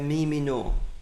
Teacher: That shua drops away, and the yod forms part of the vowel chirek, and we have mi mino.